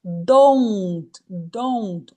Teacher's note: não é um o. É ou. Aqui dentro tem um ditongo.